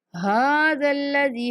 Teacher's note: ہا کے اوپر کھڑا زبر ہے، ہا کو بھی کھینچنا ہے